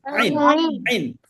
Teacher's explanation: এই যে আইন, হ্যাঁ, হলকের বা কণ্ঠনালীর মধ্য হতে গলা চেপে আদায় হয়